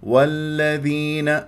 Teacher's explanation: مدغمه مرققه مشدده لا تطل جريان الصوت في اللام من كلمه الذين